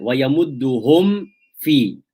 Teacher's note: And fa is also very close to the meme and the waw. We know that fa comes from one lip, whereas the meme and the waw, they come from two lips. So it's still very close. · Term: shafatain